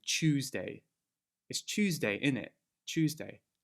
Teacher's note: So that TU turns to like a CH sound. When a Y sound appears after a T, D, S, N, L, or Z sound, I'll put these on the screen here, the Y is omitted.